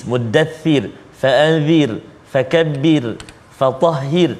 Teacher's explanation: semua huruf ra dia tarqiq, tipis. Nipis, tipis. Kenapa? Kerana sebelum huruf ra ada baris kasrah, baris bawah.